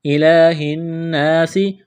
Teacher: وقف کریں گے تو سین کو ساکن کریں گے۔